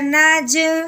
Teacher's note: حروف قلقلہ جیم ہے، اس کے اوپر جزم آئی ہے، حروف قلقلہ کو اب ہم نے ہلا دیا ہے